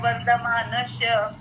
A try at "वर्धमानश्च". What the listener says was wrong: मानश्च. श नाही, शला च पण आला पाहिजे.